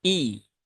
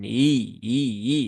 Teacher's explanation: pastikan hamzahnya nya tidak terayun tidak teringankan ya tetapi dia dibaca dengan jelas atau dibaca dengan tahqik maka hamzahnya harus benar-benar terucap i Bukan hi hi hi tapi